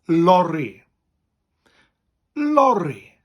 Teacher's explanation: the Welsh version for that word is lorry, with a rolling R.